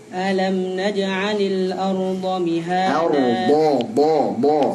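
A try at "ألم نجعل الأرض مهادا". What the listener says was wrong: Huruf dad jelaskan. Arda mihada.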